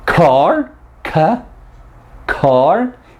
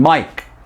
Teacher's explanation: the plosive sound, that h, is greater when the stop consonant is at the beginning of the word than when the same sound is at the end of a word.